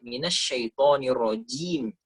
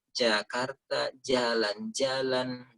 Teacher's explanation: Pangkal atau langit-langit kita minasyaitonirrojim jadi bukan seperti huruf j Indonesia huruf j Indonesia itu ujung lidah disentuhkan langit-langit Jakarta jalan-jalan jadi agak pecah nah huruf Jim bukan huruf j